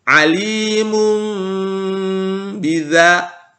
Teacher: mim dengan didengungkan begitupun ketika ada tanwin bertemu dengan huruf ba maka tanwinnya tidak terbaca melainkan kita ganti dengan huruf mim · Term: iqlab